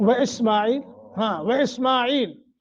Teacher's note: اسما میم کے اوپر کھڑی زبر ہے، اس کو 1 سیکنڈ کے لیے لمبا کریں گے